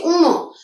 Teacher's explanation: নাকের সাথে বাতাস বের হচ্ছে, নাকের সাহায্য লাগছে, এই জন্য এটা নাসিক্য